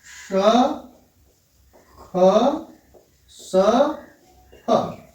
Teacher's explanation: तो ईषद विवृत जो प्रयत्न है वो श, ख, स, ह, अर्थात इसमें थोड़ा मुंह खुला हुआ होता है। ऐसी स्थिति में ऊष्म व्यंजन से संबंधित जो वर्ण हैं ये ईषद विवृत के अंतर्गत आते हैं।